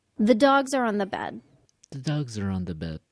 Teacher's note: de-stressed function words, said quickly, were the, are, and on. An article, auxiliary verb, preposition.